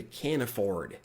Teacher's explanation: Você pode conectar direto com o N. Esse N aqui você pode conectar direto no A, tá? Então fica can afford. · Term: connected speech